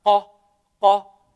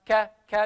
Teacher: Unlike ka, ka, because ka is pretty much closing most of the makhraj of the letter, so there is not much air in the mouth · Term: kaf